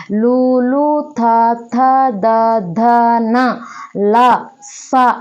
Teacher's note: దంతః అంటే లుత థ థ ద ధ న ల స అనబడేటటువంటి ఈ ధ్వనులు దంత్యముల సహాయంతో పలకబడతాయి కాబట్టి వీటికి దంత్యములు అని పేరు రావడం జరిగింది తర్వాత విషయాన్ని గమనించినట్లయితే ఓస్యములు